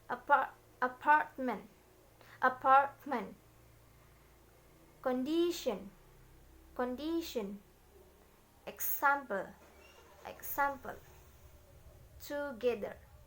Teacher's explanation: Primary stress on the second syllables and all other syllables are unstressed. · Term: stress pattern 2